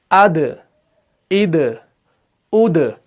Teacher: دال جو ہے یہ قلقلہ کے حروف میں سے ہے، تو اس کو تھوڑا سا جھٹکا دے کر پڑھنا پڑتا ہے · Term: صفت قلقلہ